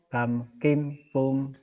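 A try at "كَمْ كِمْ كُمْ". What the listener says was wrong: Bapak bagus, tapi nadanya kayak ketan. Kam kim kum. Kam kim kum. Nadanya nada lepas ya. Nada nggak ketahan. Kam kim kum.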